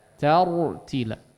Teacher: Qur'ana taru ya, di sini juga ada huruf ra yang ditebalkan. Kemudian hati-hati dengan huruf ta sebelumnya. Jangan jadi ikut tebal. Tortila ya, tapi ta.